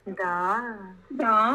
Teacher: going from high, going low, and then going up again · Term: third tone